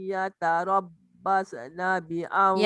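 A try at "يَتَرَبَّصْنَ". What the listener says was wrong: Yatarabbas. Jangan basa. Jangan lepaskan. Basna.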